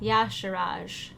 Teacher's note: so it's emphasis on the first syllable